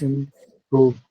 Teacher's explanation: So obviously it's going to take the stress on the second syllable